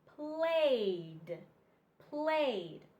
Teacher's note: It makes a D sound. So the E, you don't hear the E, you only hear the D. D, d, d in played.